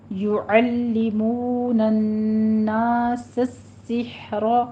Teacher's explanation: یعلمون الناس السحر، را مفخم ہو جائے گی. سین کے پر تشدید ادا کرنی ہے آپ نے سیٹی کی آواز کے ساتھ اور ہا وسط حلق سے ادا کرنا ہے